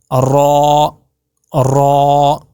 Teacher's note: جب را کریں گے تو آپ کا منہ کھلنا چاہیے پورا، را ایسے موٹا کر کے، را پورا موٹا ہونا چاہیے آپ کے، آپ کی آواز پوری گونجنی چاہیے.